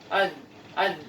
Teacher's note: kalau huruf zal lebih ke bawah, ya, lebih ke bawah ujung lidahnya, sehingga bisa dikatakan di antara dua gigi